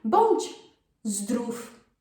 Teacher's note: And the V changes to F sound.